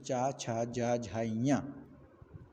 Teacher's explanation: यह सभी वर्ण तालू के द्वारा उच्चारित होते हैं